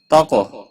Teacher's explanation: قاف ساکن پر قلقلہ ہوگا